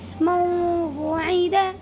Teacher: یہاں پر بھی نون ساکن کے بعد یہ واو آیا ہوا ہے، اسی لیے اس میں ادغام ناقص ہوگا اور نون کی آواز کو واو میں بدل کر غنہ کے ساتھ ناک میں لے جا کر کے پڑھیں گے